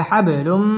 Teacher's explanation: তানবিনের বামে মিম আসছে মিম ইদগামে বা গুন্নার হরফ গুন্না সহ মিলিয়ে পড়তে হবে